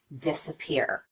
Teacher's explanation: An example of secondary stress would be the first syllable in this word, disappear. We do spend some time on this syllable and we do make the vowel louder and longer, but not quite as much as we do on this last syllable, the third syllable, peer.